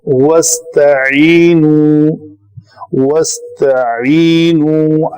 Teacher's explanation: تو جب وصل کلام میں اس کی حرکت جو ہے وہ لکھنے میں بھی حذف ہوئی ہے تو اس کو نہیں پڑھیں گے، ڈائریکٹ واو زبر کے ساتھ ہے تو آگے سین پہ جائیں گے تو پڑھیں گے وستعینو. وستعینو، عین کی جو مخرج ہے وہ وسط حلق ہے، وستعینو جو ہے وہ حمزہ سے ہو جائے گا، وہ غلط ہے.